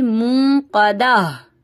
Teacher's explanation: अगर आप यहाँ पे रुकती हैं तो गोल ता को हा में बदल देंगी